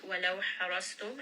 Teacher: ha again from the middle of the throat. Ra is heavy, sad is heavy.